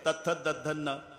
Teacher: जेव्हा जिभेचा संबंध दाताशी येतो ते दंते आहे. तथ दधन्न. प्रत्येक वेळेला जीभ दाताला धक्का मारते. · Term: दंत्य